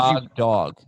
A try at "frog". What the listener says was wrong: You say frog like it's got an A in there. Like it's the first syllable only of Fraggle Rock. You say frog.